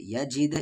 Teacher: یہاں پر قلقلہ ہوا کیونکہ دال ساکن ہے